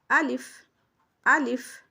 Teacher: जो इसका मखरज है जौफ, मुँह के खाली हिस्से से अदा होती है। जौफ कहते हैं मुँह के खाली हिस्सा को।